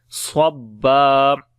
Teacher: Swad we read in heavy sound and when we stop here, so one fatha we skip and one fatha only we read, so we say then swabba.